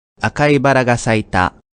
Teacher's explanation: when multiple unaccented words appear in a row you may notice each word dropping in pitch ever so slightly this is more natural and avoids sounding too robotic akai baragaseita